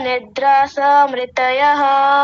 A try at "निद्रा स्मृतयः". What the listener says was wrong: निद्रास नहीं निद्रा स्मृतयः निद्रा स्मृतयः हां इसको आप आधा रखिए पूरा मत कीजिए